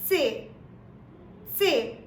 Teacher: there is a slight short T in the beginning of the pronunciation, which is very essential to sound more German.